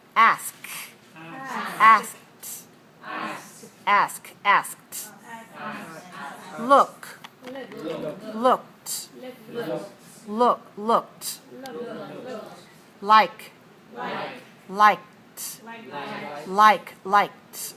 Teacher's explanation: the first group is the voiceless t ending